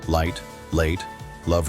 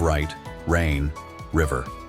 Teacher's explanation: For L, tongue touches the top of your mouth. For R, tongue stays back. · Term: L versus R